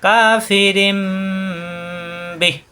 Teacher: তানবিনের পরে বা ইকলাব গুন্না, পরিবর্তন করে মিম ধরে গুণা করতে হবে। এখানে দেওয়া আছে রিন, পড়তে হবে রিম, এরপর গুণা হবে কাফিরিম বিহ।